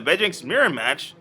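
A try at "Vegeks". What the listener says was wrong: There's no N in Vegex. It's Vegex. No N. Vegex.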